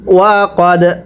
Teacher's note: দালে যদি সাকিন হয় কলকলা করে পড়তে হয়।